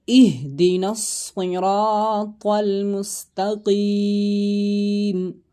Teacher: صاد حروف مستعلیہ میں سے ہے، موٹا کر کے پڑھا جائے گا۔